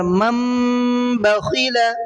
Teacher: نون ساکن یا تنوین کے بعد میں اگر با آ جاتا ہے تو وہ جو نون ساکن ہے یا تنوین ہے اس کے ساؤنڈ کو میم سے بدل دینا ہے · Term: اقلاب